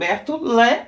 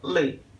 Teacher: L E LE can have the open sound LÉ or closed sound LÊ